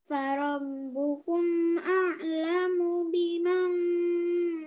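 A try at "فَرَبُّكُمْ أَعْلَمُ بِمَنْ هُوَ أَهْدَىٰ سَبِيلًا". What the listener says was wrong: Enggak dengung. Nun sukun bertemu ha, tidak dibaca dengung. Biman huwa dibaca jelas ya. Biman huwa gitu.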